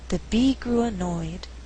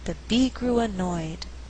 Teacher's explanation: In this sentence, we have three content words: bee, grew, annoyed. But I choose not to stress grew so that I have alternating stress. The resulting rhythm is the bee grew annoyed, dun da dun, 1 and 2.